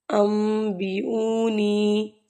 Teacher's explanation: نون پر ان ہونا چاہیے تھا لیکن اوپر میم بھی ہے تو ہم اس کو ام پڑھیں گے